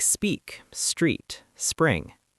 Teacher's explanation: You don't need a vowel before the S. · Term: consonant clusters